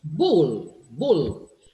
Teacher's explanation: the preceding vowel being shorter, there is more sound for the L left.